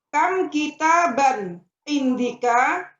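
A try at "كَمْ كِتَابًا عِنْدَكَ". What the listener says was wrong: Hasan, kam kita ban indika, bukan indika tapi indaka Bu yang betul.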